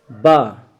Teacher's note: हमारे पास बा सघोष है ओष है लेकिन बा महाप्राण नहीं है बल्कि बा क्या है अल्प प्राण है